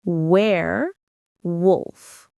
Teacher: The stress is on the first syllable where.